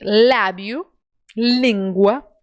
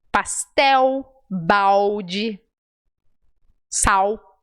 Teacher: Tem o som de L, de lábio, língua. E tem o som U, pastel, balde, sal. Percebe? Quando a letra L está no final da palavra ou antes de uma consoante, a gente transforma em U.